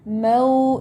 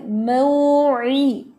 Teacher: واو لین ہے تو اس کو مو نہیں پڑھنا اور مو جلدی نہیں پڑھنا، بلکہ اس میں ایک الف جتنی مقدار ہے